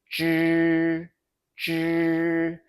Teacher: In Chinese syllables, 知 sounds like ch, unvoiced with no throat buzz until the final kicks in